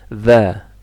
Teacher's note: Kalau the, lidah tengah dinaikkan.